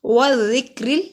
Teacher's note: الف پہ جب بھی کوئی حرکت آتی ہے ہم اس کو حمزہ کہتے ہیں. والذکر، را کو باریک پڑھیں گے، را کے نیچے زیر ہے. را کو ایسے پڑھتے ہیں زبان وائبریٹ کرتے ہیں، ر کی آواز آنی چاہیے.